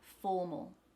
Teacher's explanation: the four in this word is the stressed syllable so that a in the second syllable becomes a schwa